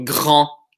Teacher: the final consonant is like a ghost letter. It disappears. You don't use it.